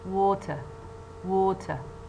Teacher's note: which one is weaker of course the one that contains the schwa and the first syllable is stronger although it has a short